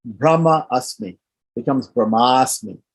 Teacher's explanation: two short a's one at the end of the first word one at the beginning of the second word they come together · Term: long a